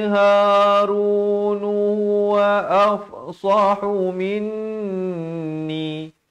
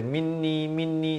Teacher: Jangan baca minni, itu tak sempurna. Nun sabdu setiap kali kita jumpa, pastikan dua harakat dengung